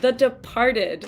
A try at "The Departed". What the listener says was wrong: There's no R in The Departed. It's an H sound.